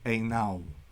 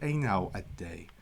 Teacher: So it goes from being a long A with the bar over it, plus U, to an AW. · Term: diphthong